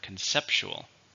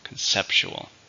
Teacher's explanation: 4 with stress on the second syllable.